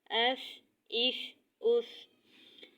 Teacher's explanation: سین میں سیٹی کی آواز آنی چاہیے اور سین کو باریک ادا کیا جائے گا